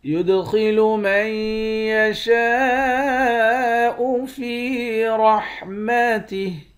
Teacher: دال پر قلقلہ کریں گے، خا کو موٹا پڑھیں گے